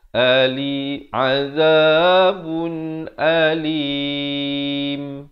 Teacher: Dan diwaqafkan dengan alim. Last kali baru tutup mulut. Jangan tutup mulut awal jadi alim.